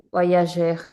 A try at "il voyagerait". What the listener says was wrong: Oui, il voyagerait. Très bien.